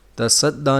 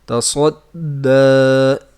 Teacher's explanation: تصدّیٰ نہیں پڑھنا بلکہ تصدّیٰ، صاد کی آواز آنی چاہیے، سین کی آواز نہ آئے